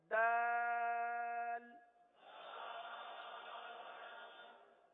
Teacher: زبان کی نوک اور اوپر کے دانتوں کی جڑ سے یہ حرف ادا ہوتا ہے۔